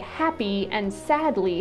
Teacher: Words like happy and sadly have an 'ee' sound in them, but the stress doesn't fall on the 'ee.' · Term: HAPPY words